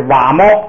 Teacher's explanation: 这个就是声调变成了这个高平调，没有别的变化